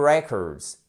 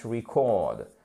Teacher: non seulement il change de syllabe, mais en plus la prononciation du E, on passe d'un E à un I court, ok? Record, ok?